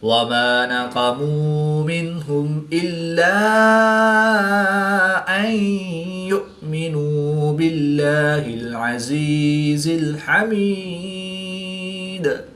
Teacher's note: نون ساکن کے بعد ہا حروف حلقی میں سے ہے تو یہاں پر اظہار ہوگا یعنی غنہ نہیں کریں گے بلکہ نون ساکن کو ظاہر کر کے پڑھیں گے